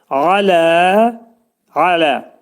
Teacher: ayn hərfi boğazın ortasından çıxarılır